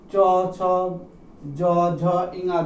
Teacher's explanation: তাই যেহেতু চ, ছ আমি বলে বুঝতে পারবো আমাদের জিহ্বার অগ্রভাগ চ, ছ, জ, ঝ, ঞ যখন উচ্চারণ করছি তার আমরা দেখবো যে আমাদের জিহ্বার অগ্রভাগ একটা শক্ত মুখের শক্ত অংশ অর্থাৎ এই তালুতে এসে স্পর্শ করছে। তাই এই ধ্বনিগুলো উচ্চারণ স্থান হচ্ছে তালু, আর তার থেকে এই ধ্বনির নাম হয়েছে তালব্য ধ্বনি।